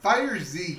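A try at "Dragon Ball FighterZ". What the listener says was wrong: According to the developer, the pronunciation is Dragon Ball Fighters. The Z is attached to the end of Fighters, but it's not pronounced. Dragon Ball Fighters.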